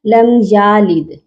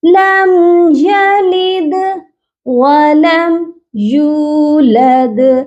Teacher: ہم نے کیا سیکھا تھا کہ زبر زیر پیش والے حروف کو کھینچنا نہیں ہے، آپ نے یہاں پر یا کو بالکل بھی نہیں کھینچنا